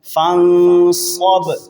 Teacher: صاد کو موٹا اور با پر قلقلہ